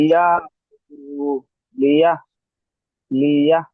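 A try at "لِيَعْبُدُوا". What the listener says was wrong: হা উচ্চারণ হয়ে যাচ্ছে, লিয়া। হ্যাঁ, লিয়া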